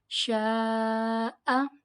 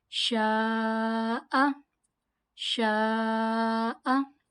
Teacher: It is madde muttasil, so we will prolong it equals to 4 alif.